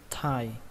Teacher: Gần giống như từ có thai. Mà các bạn thở nó ra một tí nữa, bắn hơi nó ra thêm một chút nữa.